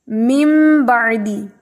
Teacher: نون کی آواز کو میم میں بدل کر پڑھیں گے